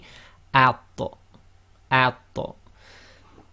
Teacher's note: The first one then is simply at, and you have to let a little bit of air through your teeth, at. And the ta is both tafkhim and it's qalqala, i.e. it's got a slight echo, which will be at, at.